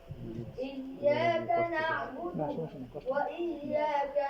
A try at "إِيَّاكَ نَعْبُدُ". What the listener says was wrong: ইয়াকা না, তার মানে নুনে একটু টান দিয়ে দিতেছেন আপনি। হ্যাঁ, নুনে টান আছে। ইয়াকা না'বুদু, ইয়াকা হবে কেন? কা, ওয়া ইয়াকা বলেন।